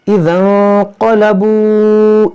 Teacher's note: نون ساکن کے بعد قاف ہے تو یہاں پر اخفا کریں گے